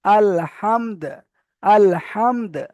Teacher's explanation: থামার সময় কিন্তু আমাকে এখানে দালটাকে সাকিন করে দিতে হবে